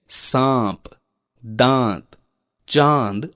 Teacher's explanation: अनुस्वार की तरह अनुनासिक अंग का प्रयोग भी किया जाता है, जिसका चिन्ह चंद्र बिंदु है। इसके उच्चारण में ध्वनि मुख के साथ साथ नाक से भी निकलती है